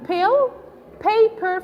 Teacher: The initial consonant, as in pill, paper, for instance, and so on, you produce the p with certain push of air. That's why we call it aspirated.